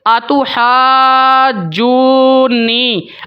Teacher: تو جب آپ نے مد کو کمپلیٹ کر کے مکمل کر کے نون یا میم کے ساتھ آپ ملائیں گے تو وہاں پر آپ نے ان کے اوپر غنہ بھی کرنا ہے